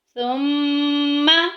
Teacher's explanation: میم مشدد آگی، غنہ کریں گے، ناک میں آواز لے کے جائیں گے